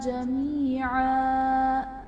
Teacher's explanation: جمیعا یا ساکن سے پہلے زیر ہے، یا مدہ کا قاعدہ سے ایک الف یعنی 2 حرکات کے برابر کھینچ کر پڑھیں گے، اور 2 زبر کی تنوین کو وقف کی صورت میں ایک الف سے بدل دیتے ہیں۔